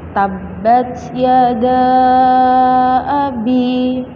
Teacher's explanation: Karena mad tabi'i bertemu dengan hamzah di lain kalimat. Maka panjang bacaannya adalah 5 harokat atau 2,5 alif.